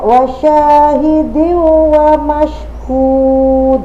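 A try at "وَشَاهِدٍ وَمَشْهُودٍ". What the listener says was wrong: Nah, hati-hati, sudah saya sampaikan tadi. Dengung. hidiwa, sambil masuk ke rongga hidung, hidiwa, wa syahidi wa mashhud.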